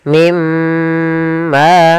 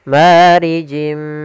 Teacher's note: Cara membacanya masukkan nunnya ke huruf mim dan kemudian ditahan dengan gunnah. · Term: idgham bi gunnah